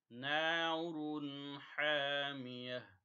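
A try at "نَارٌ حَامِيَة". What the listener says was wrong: نَارٌ اظہار ہوگا اس کے اوپر، اس کے اوپر غنہ نَارٌ نہیں کرنا، حَا، ہا نہیں پڑھنا اس کو، حَا جو ہے حلق کے درمیان سے،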